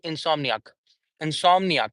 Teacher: So four syllables like main stress would be on som.